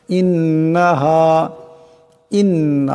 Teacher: ইন্না এখানে নুন মুশাদ্দাদকে একারে পরিমাণ গুণনা করিয়া পড়তে হবে